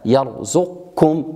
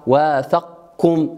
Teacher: إذن هذه كلها من المواضع التي نقرأ فيها بإدغام القاف في الكاف، يرزقكم هكذا بإدغام القاف في الكاف مع عدم بقاء صفة الاستعلاء في هذا المقام